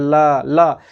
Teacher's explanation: मुख के अंदर देखिए जीभ के दोनों तरफ से, पार्श्विक पास यानी जीभ के पास से, अर्थात दोनों तरफ से जो हवा है बाहर निकल रही है, इसलिए ल को क्या बोलते हैं, पार्श्विक वर्ण बोला गया।